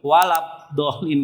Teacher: Makhraj huruf ba, kedua bibir tertutup.